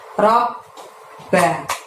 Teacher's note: Ada huruf ro menghadap ba tasydid, maka saat mengucapkan ro ditahan, ditekan selama 2 harokat